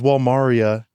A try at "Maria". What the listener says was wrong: Maria. It's like you're saying Walmart. Maria. Have you ever met somebody named Maria?